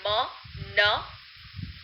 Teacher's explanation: Nasal sounds include nasal stops like m, n, which are made with complete blockage of air at the place where the articulators meet